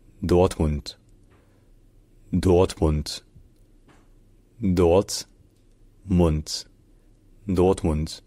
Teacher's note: il y a l'accent tonique sur la première syllabe. Dort, donc c'est un peu comme Dort en français.